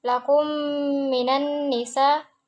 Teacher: mim sukun bertemu dengan huruf mim itu dia idgham mimim